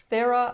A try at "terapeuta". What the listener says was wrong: You're kind of pronouncing it like it's a th, so terapeuta.